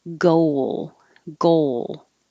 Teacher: round their lips for the o and then unround them for the l